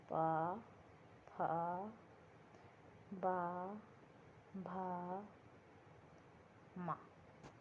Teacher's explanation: इनका उच्चारण कहाँ से होता है? ओष्ठ से होता है।